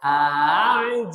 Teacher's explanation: Tashil itu meringankan bunyi hamzah yang kedua.